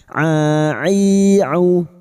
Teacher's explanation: huruf ain wastul halqi atau tengah tenggorokan